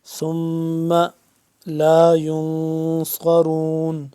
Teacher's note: نون ساکن، یہاں پہ ہم کیا کریں گے اخفا کریں گے، یہاں پہ غنہ کریں گے